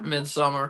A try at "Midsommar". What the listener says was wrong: Yeah, it's Midsommar. Midsommar. It's AR, not ER at the end of the word. It's not ER. It's AR. Midsommar.